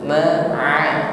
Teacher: lunakkan pengucapan huruf ain wasatul halqi, makhrajnya tenggorokan bagian bawah, tenggorokan bagian tengah.